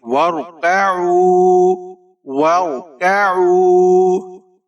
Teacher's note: را ساکن ہے، یہاں پر را کو ہم موٹا کر کے پڑھیں گے، واو۔ کاف کے اوپر زبر ہے، بغیر کھینچے پڑھیں گے، باریک پڑھیں گے۔ · عین کے اوپر پیش ہے، آگے واو ساکن ہے، یہاں پر واو مدہ کریں گے، ایک الف کی مقدار تک کھینچ کر پڑھیں گے، وارکعوا، وارکعوا۔